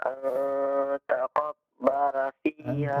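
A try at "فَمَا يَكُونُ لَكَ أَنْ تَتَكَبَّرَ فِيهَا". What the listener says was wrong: Huruf ta-nya ada 2.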